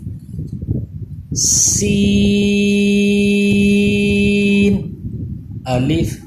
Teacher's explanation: سین پہ پھر سیٹی کی آواز آئے گی اور باریک پڑھیں گے